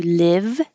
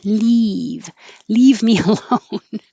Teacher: the vowel is i as in hit so your tongue is not too high live and if your tongue is high it will sound like